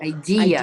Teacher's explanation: idea has that stress on the second syllable